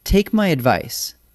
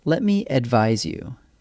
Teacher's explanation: Advice with a C, that's a soft S sound, is a noun, a thing you give. Advise with an S, that's a Z sound, is the verb, the action of giving it.